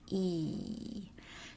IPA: i: